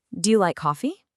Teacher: For questions you can answer with a simple yes or no, our pitch naturally goes up at the end.